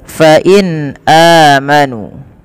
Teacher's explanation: nun sukun bertemu dengan hamzah, ini suara nunnya dibaca dengan jelas karena ia ada bacaan yang kita namakan dengan izhar halqi. Maka harus dibaca dengan jelas.